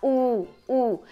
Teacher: Então eu falo U, lava a mão, coloca o dedo dentro da boca e produz um U, para você ver que o que vai acontecer é que a parte posterior da sua língua vai levantar